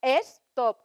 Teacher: Sin habernos puesto de acuerdo, todos los españoles metemos una E.